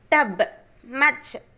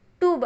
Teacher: Spelling வந்து யூ அப்படின்னு இருக்குது, ஆனால் நம்ம ப்ரொனவுன்ஸ் பண்ணுறது ஆ சவுண்டில் தான்.